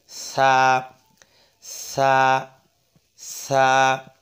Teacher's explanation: অর্থাৎ এই যে জিহ্বার আগা, এই জিহ্বার আগাটা ওপরের 2 দাঁত রয়েছে, এই 2 দাঁতের আগার সঙ্গে লেগে জিহ্বাটা একটু বের করে দেবো হালকাভাবে